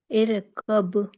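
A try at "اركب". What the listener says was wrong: نہیں رو پہ قلقلہ نہ کرے ارکب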